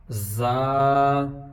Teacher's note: اب زا کی جو آواز ہے یہ شہد کی مکھی کی بنبناہٹ کی طرح اس کی آواز آتی ہے